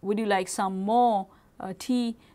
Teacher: when we expressing something like that we are emphasizing on more to say to focus there